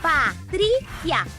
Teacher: Patrícia. A mais forte é a penúltima.